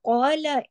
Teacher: قوف موٹا پڑھا جائے گا، قو 2 حرکات پڑھا جائے گا کیونکہ اس کے ساتھ الف مدہ ہے